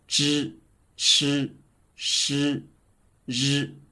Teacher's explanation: the written vowel E is pronounced like the hidden vowel in the sound of zh, and the tongue is a little curled up without touching the teeth.